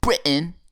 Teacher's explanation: No T sound whatsoever.